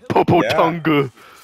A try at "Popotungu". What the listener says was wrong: That you don't pronounce the U.